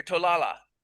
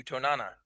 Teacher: Um if you're on the coast or in one of the border villages uh the surrounding languages all have the L phone and so you're likely to hear tlala but if uh you go to the interior villages and this is across dialects um you will not hear the L because Solos doesn't have the L phone